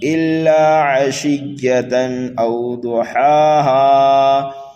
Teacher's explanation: عشیۃً او ضحاہا، حمزہ کو جلدی پڑھیں گے واو لین کی وجہ سے۔ حرف ضاد کو پر کر کے پڑھنا ہے، اور ہا کو ایک الف کے برابر کھینچ کر کے پڑھنا ہے